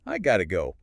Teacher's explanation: it's like have to just get squished down into one quick syllable